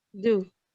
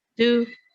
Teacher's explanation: The first do is weak, do, and the second is strong, stressed, do.